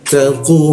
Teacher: Posisinya di sikut tenggorokan lidahnya kita naikkan ya · Ta itu ujung lidah ditempelkan ke gigi, ada desis bocor halus dia.